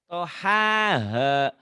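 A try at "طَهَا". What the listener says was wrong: Tertuker. H kecil dulu. Tohaha.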